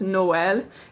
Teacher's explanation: It's called the tréma, and that just means that you pronounce two vowels separately as opposed to combining them into one sound. So the French word for Christmas, Noël, usually you don't have two vowel sounds in a row in French.